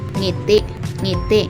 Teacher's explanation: sa paraan ng artikulasyon ito ay pailong na may tinig